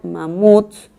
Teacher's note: Cuando yo la silabeo, digo mamuts, la última sílaba es tónica. ¿Eso qué quiere decir? Que es una palabra aguda.